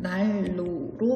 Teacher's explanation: 난로와 같은 단어를 보면 니은이 뒤에 오는 리을을 만나서 리을을 닮아 리을로 발음되는 현상입니다. 따라서 난로의 발음은 날로로 발음됩니다. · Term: 유음화